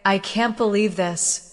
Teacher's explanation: If you say, I can't believe this. with a downward tone, it may show disappointment.